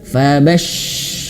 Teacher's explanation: huruf syin ketika dia bertasydid itu dikeluarkan anginnya as bertebaran di mulut